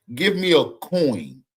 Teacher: there's two vowels right there that glide right into each other. O and I. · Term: dip thong